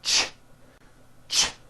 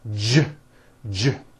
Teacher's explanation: if you take this CH sound and you keep everything in your mouth the same, you just add voicing, it becomes an American J sound, j, j. CH, ch, unvoiced, J voiced, j, ch, j.